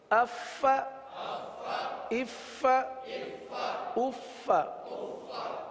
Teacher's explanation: فا کی یہ آواز سانس والی آواز یہ ظاہر ہونی چاہیے